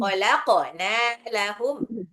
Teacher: أولم يروا أنا خلقنا لهم مما Hati-hati, kholaq, qafnya pantul dulu, terus nunnya 2 harokat